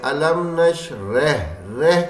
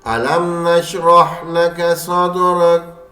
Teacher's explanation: رہ نہیں ہے راہ کو موٹا کرنا ہے